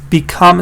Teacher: Become stresses on the second part.